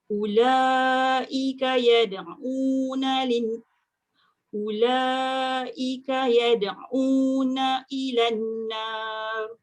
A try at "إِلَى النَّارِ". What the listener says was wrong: Ilan tu dengung sikit. Ilan nar.